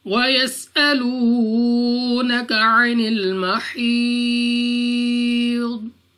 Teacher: वाव साकिन से पहले पेश यानी वाव मद्दा है, 2 सेकंड तक खींच कर पढ़ेंगे · सीन, तो सीटी वाली आवाज के साथ पढ़ा जाएगा